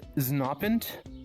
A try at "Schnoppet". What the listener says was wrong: It's pronounced Schnoppet.